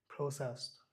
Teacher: এটাকে ডয়ের মতো উচ্চারণ না দিয়ে টয়ের মতো উচ্চারণ দেওয়া হয়েছে আইপিএতে।